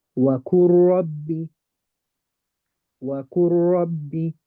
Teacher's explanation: They're going to be close. I'm going to hide the lam, go straight to the ra.